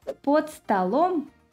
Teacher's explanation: in the instrumental case «под столом» – «under the table» – the stress shifts to the second syllable